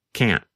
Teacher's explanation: that a held T instead of pronouncing the T your tongue just comes to a stop against the hard part of the roof of your mouth just behind the Upper Front Teeth maybe we'd better say that location one more time good idea